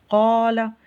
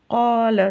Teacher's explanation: ایک وہ قاف ہے جو کہ کوا جس کو پیچھے لٹک رہا ہے وہاں سے حلق کے انتہائی حصے سے جس کو ادا کرنا ہے